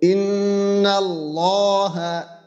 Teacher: নুনের উপরে তাসদিদ এজন্য আমরা এখানে গুন্না করব